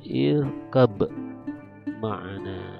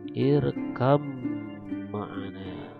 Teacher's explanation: Jadi dihilangkan ba-nya, langsung ke mim ditasdidkan. Seperti ini jadinya, irkam ma'ana, ya.